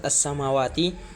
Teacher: maka cara membacanya alif lamnya tidak terbaca karena masuk kepada huruf sin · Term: idgham syamsiyah